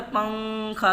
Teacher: नून की आवाज़ को नाक में छुपाकर पढ़ना चाहिए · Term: इख्फा